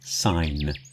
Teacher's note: Sign, you don't hear the G.